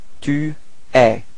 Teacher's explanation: you can notice that it's open eh, eh. So don't be afraid to open your mouth.